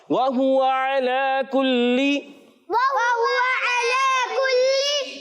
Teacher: आइन की अदायगी हलक के दरमियान वाले से